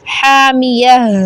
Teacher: नारन, फिर आगे हामिया, ता गोल ता को हा में बदल कर इसको साकिन करेंगे